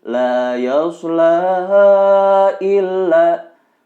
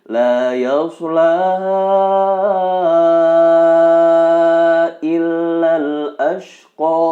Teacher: Ini dibaca panjang 4 harokat. Tidak dibenarkan membacanya 2 harokat. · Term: mad jaiz